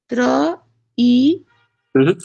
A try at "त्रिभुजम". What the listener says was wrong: त्र नहीं, त र ई